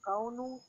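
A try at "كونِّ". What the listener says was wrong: This is not कौन this is कविन zoom the word वाओ There is a kasra and shadda here. Kawin.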